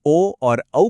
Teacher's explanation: ओ और औ को बोलने में गला यानी अ और होंठ यानी ऊ एक साथ काम करते हैं